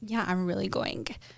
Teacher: there's an uptalk, which is like high rising intonation at the end of sentences